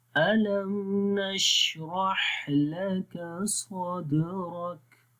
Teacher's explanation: شین اور ہا دونوں کے اوپر آواز زیادہ تھوڑی سی کلیئر اور لمبی ہو جاتی ہے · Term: رخاوہ